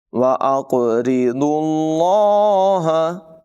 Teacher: قاف کو پر پڑھیں گے، را کی ادائیگی بریک ہے، ضاد کو بھی پر پڑھیں گے، اور ضاد کو لفظ اللہ کے ساتھ ملائیں گے